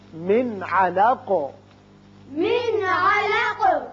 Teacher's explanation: نون ساکن کے بعد عین ہے جو حروف حلقی میں سے ہے، لہذا نون پر اظہار حلقی کیجیے